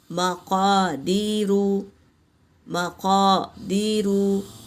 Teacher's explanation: मक़ा क़ाफ़ पुर है, अलिफ से पहले ज़बर है, अलिफ मद्दा